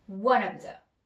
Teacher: one of the 이렇게 해서 다 똑같은 힘을 주는 것보다 원에 살짝 힘을 한번 줘보세요. 그래서 one of the 이런 느낌이죠.